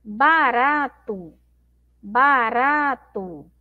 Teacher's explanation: a sílaba mais forte é o rá